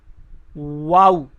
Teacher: वाऊ को अदा करते हुए होंठों को गोल करके पढ़ा जाता है। पहले होंठ गोल करते हैं, वाऊ।